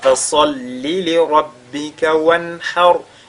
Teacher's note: Le ra sur lequel on s'arrête est précédé par al-fatha, il est donc avec at-tafkhim